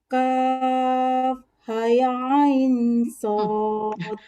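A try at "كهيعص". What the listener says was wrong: Haya ain, kalau haya itu hanya satu berarti. Hanya dua, say. Panjangkan 6, pantulkan.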